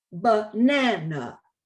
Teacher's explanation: but in english because the stress fault on the middle syllable the first and the third sounds become schwas